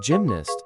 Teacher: Pronunciation, pronounced gymnast as ʻdʒɪm.næsts, with the emphasis on the first syllable, gym